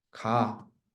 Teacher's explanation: 요 아라는 어미와 뒤에 모음어미 아라는 어미가 동일하잖아. 그래서 앞에 있는 어간에 있는 동음모음이 탈락되는 거죠. 그래서 어간에 기억이 남고 어미에 아가 남아가지고 가. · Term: 동음모음 탈락